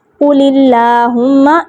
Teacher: قل والا جو لام ہے وہ باریک ہے، اس کے نیچے زیر ہے سوری، اور آگے پھر اللہم کا لام بھی باریک پڑھا جائے گا